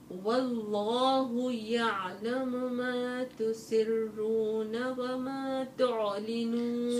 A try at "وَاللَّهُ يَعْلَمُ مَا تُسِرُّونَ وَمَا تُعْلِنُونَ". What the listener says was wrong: شو بدي اسوي فيك عشان تعرفي كيف تفخمي الراء دائما لما والله يعلم ما تسرون تسرون وما تعلنون. ما تسرون يعني الراء الأولى مفخمة والثانية مفخمة.